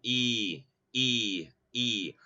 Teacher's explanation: E, which is a high, because your tongue goes high, and it's also because it's front, because your lips are going like to the front.